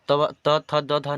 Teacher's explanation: त थ द ध न जो है वह दंत से उच्चारण होता है